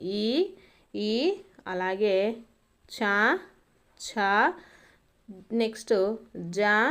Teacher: దవడ భాగంతో పుట్టే అక్షరాలను తాళవ్యాలు అనేసి పిలుస్తామండి